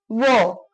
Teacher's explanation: वो का उच्चारण दंत प्लस ओष्ठ, वो। अब ब का उच्चारण 2 होठों के बीच, व।